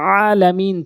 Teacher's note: এখানে আইন এনে বলতে হবে আইনের জায়গায় হামজা এনে বলে বলতে হবে আলামিন চাপ দিয়ে বলতে হবে এইজন্য প্রতিটি হরফ গুরুত্ব